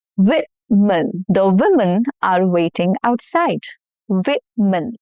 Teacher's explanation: O changes to a short I sound and the stress is on the first syllable